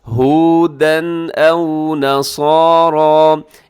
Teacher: یہاں تنوین ہے اور تنوین کے بعد آگے حمزہ ہے، تو یہاں پر اپنے اظہار کرنا ہے، غنہ نہیں کرنا۔ ہودن او نصارى، اسے او کو آؤ نہ پڑھیے گا، آؤ غلط ہو جائے گا، او ہونٹ آپ کی گول ہو جائے۔ · ہودن او نصارى، اسے او کو آؤ نہ پڑھیے گا، آؤ غلط ہو جائے گا، او ہونٹ آپ کی گول ہو جائے۔ نصارى، صاد بھی موٹا ہے، را بھی موٹا پڑھا جائے گا۔